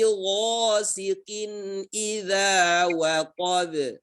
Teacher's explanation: Gha di sini dibaca dengan tebal, huruf isti'la. Gha huruf isti'la.